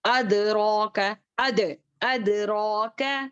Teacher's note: رو پر کھڑا زبر ہے تو اس کو کھینچ کر پڑھیں گے